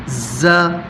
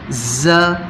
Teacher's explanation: ز، یہ وہ سٹی والے حروف میں سے ایک حرف ہے، ز، اس کو سنیں کہ کیسے پڑھا جا رہا ہے، اس میں آپ کو سٹی کی آواز سنائی دے گی